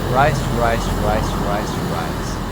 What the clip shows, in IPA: riːs